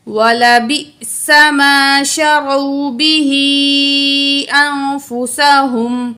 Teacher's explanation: حمزہ ایسا ہے جب ساکن ہو تو اس میں جھٹکا ہوتا ہے، ٹھیک ہے، زبر زیر پیش ہو تو جھٹکا نہیں ہوگا، جب جزم ہوگی یہ والی ساکن ہوگا تو حمزہ میں کیا ہوگا، جھٹکا ہوگا۔